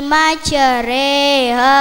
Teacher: Ini adalah pengucapan vokal di antara fathah dan kasrah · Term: Imala